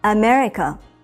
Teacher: when you say America in English you put stress on mer and state for longer than the other parts America the word